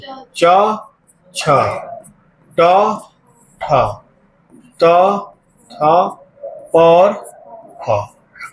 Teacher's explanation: जिन व्यंजन के उच्चारण में स्वर तंत्री में कंपन न हो, अघोष कहलाते हैं।